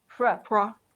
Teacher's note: remember that here we have the cluster PR. So we say we don't add a vowel between them.